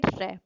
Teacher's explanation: इन ध्वनियों के उच्चारण में जीभ की नोक मसूड़ों के पास आती है और अंदर से आती है हवा के प्रवाह के कारण वह 2-3 बार कंपन करती है, जैसे र। प्रकंपित ध्वनि है, इसे लुंठित ध्वनि भी कहते हैं।